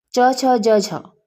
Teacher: छ ध्वनि का उच्चारण स्थान होगा तालव्य